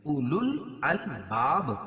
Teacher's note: اولو الالباب وقف کی صورت میں یہاں با پر قلقلہ کریں گے